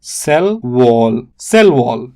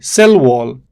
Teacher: stress falls on the second word